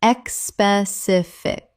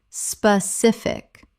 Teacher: 3 syllables. There is no E at the start. It begins with SP, not ESP.